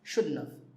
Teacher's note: when we say it fast, we even say shouldn't have. We leave the T out.